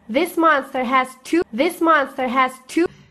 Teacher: The word monster here lost the R sound at the end of the word.